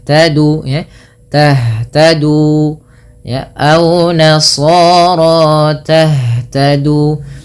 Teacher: Kemudian perhatikan pada lafal tah, huruf ha bila dia sukun maka cara membacanya adalah dikembalikan dengan sesuai dengan makhraj dan sifat hurufnya. Ha itu merupakan salah satu sifatnya adalah hamas. Hamas artinya mengalirnya nafas. Yang kedua, ha juga termasuk namanya sifat rokhawah, mengalirnya suara.